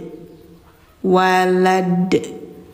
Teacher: Kullahu walad. Ada de-nya, pantulan, qalqalah namanya